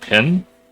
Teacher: in the South, you'll hear people say like if they're looking for a pen, it'll sound like pin